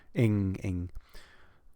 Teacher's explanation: It's an NG sound. Ing, ing, made with like ing, the middle back of your tongue.